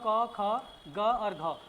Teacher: क मतलब क में कम वायु खर्च होती है। स्वास वायु ख में ज्यादा हो रही है। ग में कम होती है। घ में ज्यादा होती है।